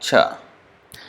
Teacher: It's not the tip of the tongue that is touching, it is the center of the tongue that is touching at the top.